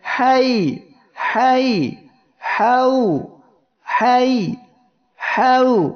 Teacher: লিন এর হরফদ্বয় তাদের মাখরাজ থেকে উচ্চারণের সময় এমন নরমভাবে উচ্চারিত হবে যাতে মদ করলে করা যায়, অর্থাৎ পরবর্তী হরফে ওয়াকফ করলে মদ করা সম্ভব হয়।